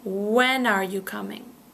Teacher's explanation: So when are becomes one word.